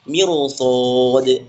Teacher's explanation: miru roh sukun sebelumnya kasroh, tapi karena bertemu huruf isti'la maka dibaca tebal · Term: roh tafkhim